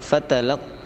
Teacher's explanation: Fa itu pendek, fatalaq, yang panjang hanya qa, itu mad jaiz, harus 6 harokat.